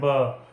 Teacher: ब को जब हम बोलते हैं तो जो हमारे होठ है वो दोनों आपस में मतलब मिलते हैं, उसके बाद ये बोला जाता है ब।